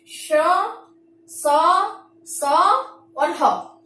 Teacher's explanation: ऊष्म व्यंजन में क्या होता है कि जो हवा है मुख के भागों को टकराकर ऊष्मा यानी कि गर्मी उत्पन्न करती है